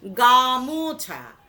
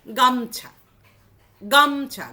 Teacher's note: গাটা বলতে গেলে, উচ্চারণ করতে গেলে আমার শ্বাসবায়ুটা বেশি বেরোচ্ছে, ফলে গায়ের ওপরে কিন্তু স্ট্রেসটা পড়ছে বেশি। এই গায়ের ওপরে স্ট্রেসটা পড়ার ফলে গামোছা, এইটাকে আমরা আরও সহজ করে উচ্চারণ করলাম কি? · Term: মধ্য স্বরধ্বনি লোপ